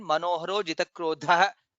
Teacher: manoharo jitakrodha. Dha is mahaprana.